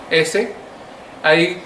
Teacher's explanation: que a lo mejor es un poco difícil de percibir pero no vibran las cuerdas vocales el aire sale de una forma casi rozando o sea se le llama aplicativo y la lengua está casi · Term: sonido alveolar, fricativo